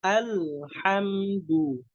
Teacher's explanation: Dijelaskan hamzahnya. Ditipiskan juga. Caranya dengan tersenyum.